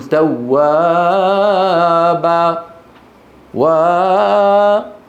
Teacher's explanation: طيب لو العكس، لو قدم الحكم النغمي على الحكم التجويدي، يعني مثلا بعض إخواننا لما بيقرأ بيقول لك إنه كان توابا، يطول يقول توابا وبا، الأولاني طويل والثاني با أقصر منه